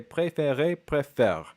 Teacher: The R is something pronounced in the back of the throat, is a h sound.